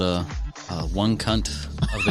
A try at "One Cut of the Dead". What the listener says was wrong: That was, you added an extra letter. One cut of the dead. We don't, y'all don't say that.